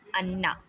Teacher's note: Ghunnah means to stretch the Noon Mushaddad and Mim Mushaddad partially in your nose for 1 to 2 seconds. Means to stretch the noon mushaddad and mim mushaddad sound for 1 to 2 seconds.